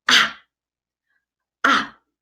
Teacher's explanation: The last one is the falling tone. It goes down.